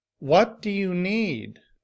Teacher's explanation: the stress is placed on the word what and need it's louder it's longer and the pitch of my voice is just a little bit higher